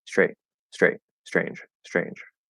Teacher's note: hear a little bit of s at the beginning and it immediately starts transitioning to an sh